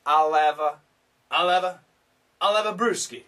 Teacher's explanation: almost always the H is canceled, so we connect, linking sound.